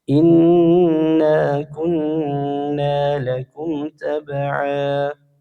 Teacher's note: ada dua huruf nun tasdid. Inna dan kunna. Ya, dua-duanya gunah.